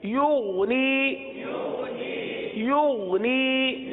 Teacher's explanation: غین میں قلقلہ نہیں ہوتا اور غین کو گاف کی طرح نہیں پڑھتے